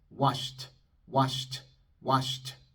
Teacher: T es sorda, soplamos un poco de aire después.